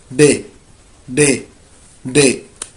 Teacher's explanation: بنقلب طرف اللسان بنحطه في اعلى سقف الحنك وبنطلع مع نفس بسيط كده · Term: دال